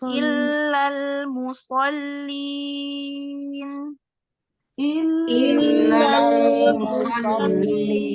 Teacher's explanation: Tahan sedikit di huruf lam yang bersukun.